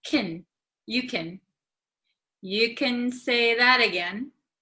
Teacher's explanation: for like Americans usually like can gets very short